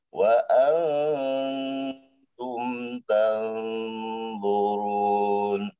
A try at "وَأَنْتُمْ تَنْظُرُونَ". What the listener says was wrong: Nah, nunnya tebal, Pak. Nun tebal, zo tebal.